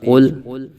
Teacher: قاف لام پیش قل، قاف حروف مستعلیہ میں سے ہے، قاف کو پر پڑھیں گے، لام ساکن میں آواز ختم کر دیں گے، قل قل نہیں کریں گے بلکہ قل، قاف کو پر ہی پڑھنا ہوگا، کاف کو باریک پڑھا تو معنی بدل جائیں گے، جس کی وجہ سے اگر نماز میں پڑھ رہے ہیں تو نماز فاسد ہو جائے گی۔